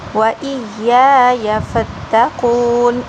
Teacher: پہلے یا کو لمبا کریں گے دوسرے یا کو نہیں